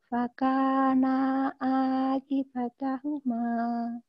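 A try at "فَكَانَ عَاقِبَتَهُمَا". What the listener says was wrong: Oke, naknya pendek. Fakana'a gitu. Langsung ke ain. Ki-nya juga pendek. Fakana'a kibatahuma.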